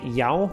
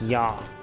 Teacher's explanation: you have this ow sound in modern Icelandic and this long R sound in Old Norse.